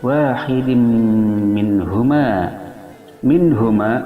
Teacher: nun mati bertemu ha, hukumnya idhar halqi, yaitu jelas membunyikan nunnya minhuma, dikarenakan nun mati bertemu ha salah satu huruf idhar yang 6, yaitu hamzah, ain, ha, dan kha ghain. · memasukkan tanwin kasrah kepada mim disertai dengan dengungan 2 harakat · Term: idgham bi gunna